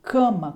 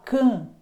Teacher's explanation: Quando você fala can, você nota que há uma nasalidade